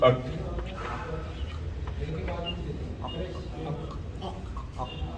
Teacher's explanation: زبان کی جڑ اور پرجیب کے بیرونی حصے سے ادا ہوتا ہے, باہری حصے, جیسے اک. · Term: کاف